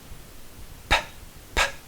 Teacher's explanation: Mas também é uma plosiva bilabial, porque o ar prende e solta através dos dois lábios.